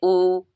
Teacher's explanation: जिन स्वरों के उच्चारण में ओठ गोलाकार होते हैं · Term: वृत मुखी